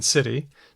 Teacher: There's a tap, as in city.